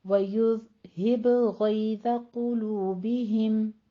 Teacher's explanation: باء پہ قلقلہ کرنا ہے ذال کو ساکن کرتے ہوئے